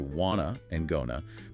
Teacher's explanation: Want to and going to reduce to wanna and gonna because the speaker have to maintain the beat.